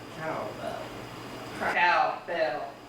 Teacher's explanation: We can say cow is stressed and bell is almost stressed. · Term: secondary stress